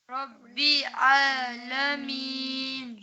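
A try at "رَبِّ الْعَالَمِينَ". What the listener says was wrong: ربی نہیں ہے، رب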